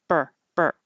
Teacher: as soon as I open my lips, my tongue's already making the R, so there's no delay, like burr.